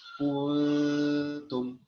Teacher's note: Tidak benar adanya bila dibaca ikhfa diucapkan dengan bunyi eng